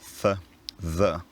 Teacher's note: The interdental fricatives th, the, so called because the tongue is between the teeth when you're pronouncing them